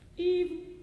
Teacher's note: on evil, I think you should have a little glottal